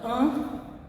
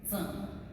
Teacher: it's a Z with a UH sound to it, like zum. Zum. And it's really nasalized.